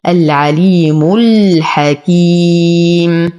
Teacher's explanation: تل، أنتقل من فتحة التاء إلى إسكان اللام القمرية. العليم، أنتقل من ضمة الميم إلى إسكان اللام في كلمة الحكيم · نقف على الميم بالبينية وقبلها حرف مد، إذن لدينا مد عارض للسكون يمد بمقدار 2 4 6 حركات